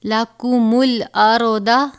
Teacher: را کو بھی پر پڑھیں گے اور دواد حرف مستعلیہ میں سے ہے، دواد کو بھی پر یعنی موٹا پڑھیں گے